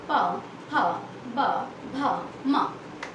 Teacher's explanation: तो प, फ इसको बोलते समय ये होते हैं ओष्ठ वर्ग, यानी ओठ से टच हुआ। प बोलिए तो मेरे ओठ से ओठ जो है आपस में टच हुए